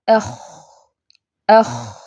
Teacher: تو دیکھیں کیسے ہم نے پڑھا، اخ اخ، سانس جاری ہے اس میں، تو اس کی آواز میں پستی ہے۔ اس کی آواز جو ہے وہ نرم ہوتی ہے، اس کی آواز موٹی ہے، کیونکہ حروف مستعلیہ میں سے ہے خاء، تو آواز موٹی ہوگی۔